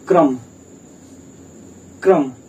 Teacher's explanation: का जो है बहुत थोड़ी देर के लिए आ रहा है, लेकिन रा जो है, रा का उच्चारण थोड़ा देर तक हो रहा है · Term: पदेन रूप